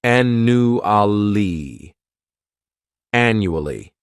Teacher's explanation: this word has four syllables and the stress is on that first syllable the second syllable it's like you're just saying that letter u · The second syllable, it's like you're just saying that letter U, and the third syllable has that schwa